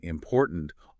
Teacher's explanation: the examples computer with the stress on the second syllable and important also stressed on the second syllable